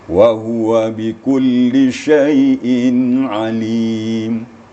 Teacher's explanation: Jadi ainnya sedikit lagi, ya. Ainnya sedikit lagi ketebalannya, diangkat isti'la pangkal lidah kita menjadi alim.